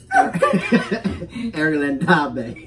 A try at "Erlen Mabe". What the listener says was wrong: No, it would have been Erlen Mabe. You said Dabe. Erlen Dabe. It's Erlen Mabe.